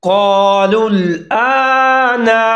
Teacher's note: قالوا الآن، قاف اور الف دونوں موٹے پڑے جائیں گے، آگے حمزہ کے اوپر کھڑا زبر ہے، اس کو ایک الف کے برابر لمبا کر کے پڑھیں گے۔